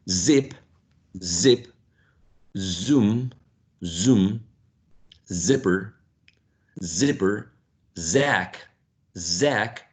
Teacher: you should feel vibration here in your throat which means that your vocal folds are vibrating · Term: voiced sound